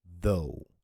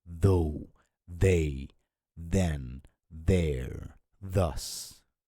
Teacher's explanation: So the first TH sound is voiced. Vocal cords vibrate, okay, as in though. So it's a soft D sound, right?